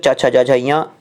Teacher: चवर्ग च छ ज झ और या और सा, इनका उच्चारण स्थान होता है तालु से।